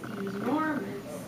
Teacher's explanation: it's like it's unstressed stressed unstressed